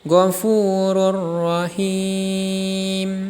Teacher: cara membacanya dibaca panjang 2-6 harokat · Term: Mad Arid lissukun